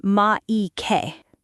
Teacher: every consonant is usually followed by a vowel, so Mike becomes ma-i-ke